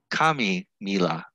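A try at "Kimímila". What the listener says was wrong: No, it's K-E, even though it's spelled with an I.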